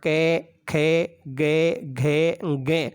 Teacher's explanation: ए का उच्चारण स्थान बताओ या आ का उच्चारण स्थान बताओ तो उत्तर होगा कंठ। फिर है कु का मतलब है कै वर्गीय वर्ण, कै वर्ग के वर्ण कै, खे, गे, घे, गे। इन सब का उच्चारण स्थान भी कंठ होगा।